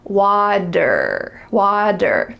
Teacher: Well, it's not a T sound, water. Instead, it's a D. Here we have again, the T is changing to a D.